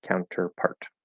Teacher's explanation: that T at the end is most likely going to be stopped, potentially dropped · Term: stop T